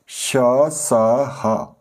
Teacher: यानी कि जिनका उच्चारण जब हम करते हैं जो हवा है हमारे मुख से रगड़ टकराती है और उसकी रगड़ से एक ऊष्मा गर्मी पैदा होती है। इनको हम उष्म व्यंजन कहते हैं। · तो तीसरा वेद है ऊष्म व्यंजन। ऐसे व्यंजन जिनका उच्चारण करते समय वायु मुख में टकराकर ऊष्मा पैदा करती है, उन्हें ऊष्म व्यंजन कहते हैं।